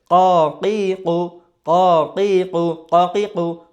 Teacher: জিব্বার গোড়া উপরের তালুর দিকে চলে যাবে, অর্থাৎ উপরের তালুর দিকে ওঠাতে হবে। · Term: মোটা হরফ